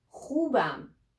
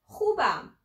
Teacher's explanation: You may find it a little bit difficult to pronounce kh sound, but I will tell you, let's say, the back of your tongue will touch the upper part of your mouth